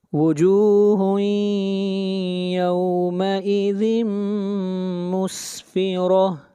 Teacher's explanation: ادغام مع الغنہ، تنوین کے بعد حروف یرملون میں سے میم ہے